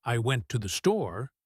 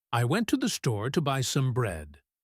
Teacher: The words store and bread are the peaks of the mountain. The other words are the valleys. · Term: stress peaks